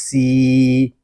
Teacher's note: سین حروف صفیریہ میں سے ہے، اس میں سیٹی کی آواز آئے گی. یہاں یا مدہ ہو رہا ہے، ہم سین کو ایک الف تک کھینچ کر پڑھیں گے.